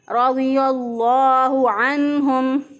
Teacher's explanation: रज़ियल्लाहु रा के ऊपर ज़बर इसको पुर पढ़ेंगे, मोटा पढ़ेंगे।